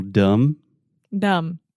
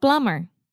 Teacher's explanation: so there's a B in the word dumb but we do not pronounce it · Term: silent